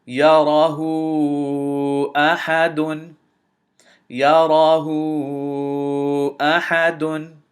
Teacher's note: Notice, because of this hamza immediately following the dhamma and the waaw, because this is a mad and immediately following it, immediately after it is a hamza, this mad has to be or should be extended to 4 counts